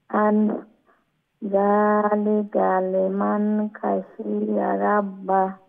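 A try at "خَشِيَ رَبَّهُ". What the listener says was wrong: খ আর একটু মোলায়েম করে উচ্চারণ করবেন, লেটা খ গলার উপরের অংশ থেকে উচ্চারণ হবে এবং ফুল মাউথ মুঠা করে উচ্চারণ হবে এবং তার মধ্যে একটা মোলায়েমতা থাকবে। এটা খাশিয়া, খাশিয়া, হ্যাঁ খাশিয়া, এরকম।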